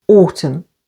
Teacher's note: N is silent after M, as in the words autumn, with the stress on the first syllable